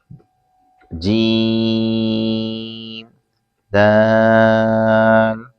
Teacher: جیم زبان کے درمیان تالو کے درمیان سے ادا ہوتا ہے اور دال زبان کی نوک اوپر کے دانتوں کی جڑ سے ادا ہوتا ہے